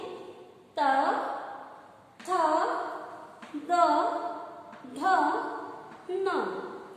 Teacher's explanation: हमारी जिह्वा दांतों को टच करती है और दांत जो है आखिरी में जो आपस में टकराते, त, थ, द, ध और न।